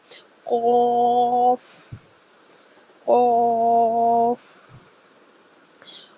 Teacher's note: قاف کو پور پڑھا جاتا ہے۔ 2 سے 2.5 الف کے برابر اس کو لمبا کیا جاتا ہے، اور یہ حروف مستعلیہ میں سے ہے۔